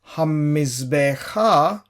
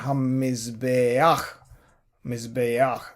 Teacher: So the sound of the patach comes first, which is why it is towards the left of the letter het and not directly under the letter, as in the case of he here. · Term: furtive patak